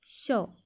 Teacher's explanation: श जो होता है वो अघोष व्यंजन होता है। अघोष व्यंजन में होते हैं जिसमें हमारे मुंह से कंपन नहीं निकलती है